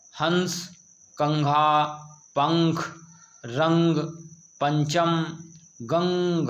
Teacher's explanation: तो यह किसका चिन्ह है अनुस्वार यानी अंग की मात्रा को इसका उच्चारण करते समय हवा नाक से बाहर निकलती है